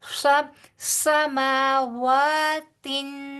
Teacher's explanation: واؤ کی ادائیگی ہونٹوں کو پوری طرح گول کر کے 2 حرکت کے برابر لمبا پڑا جائے گا